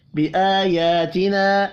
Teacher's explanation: 2 کھڑی زبر ہیں، دونوں کو 1 1 الف کے برابر کھینچ کر پڑھنا ہے، چھوٹی مد 3 الف کے برابر کھینچ کر پڑھی جائے گی